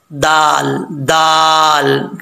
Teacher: ज़ुबान की नोक ऊपर वाले दांतों की जड़ों से लगे तो दाल पढ़ा जाता है